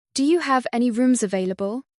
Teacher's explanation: Stressing available helps the listener understand your main point.